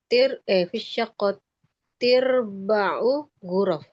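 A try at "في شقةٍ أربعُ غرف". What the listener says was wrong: Ya, bukan tirba'u. Fi syaqqati arba'u gitu.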